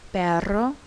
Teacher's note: R is a rolling R sound. It can be called a trilled R or a rolling R. You'll find it in words like perro.